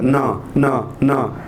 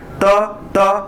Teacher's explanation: न न असं म्हटल्यावरती या नाकपुड्यावरती थोडं कंपन येतं, न. त्याऐवजी त म्हटलं तर त ठेवून बघा, त म्हटलं तर नाही येत आहे, म्हणजेच काय झालं, हे अनुनासिक आहे.